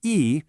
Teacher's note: its default is that high first tone. But if the very next word has a first, second, or third tone, E changes to a falling fourth tone, E.